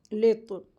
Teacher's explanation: लाम को तो में मिला के पढ़ेंगे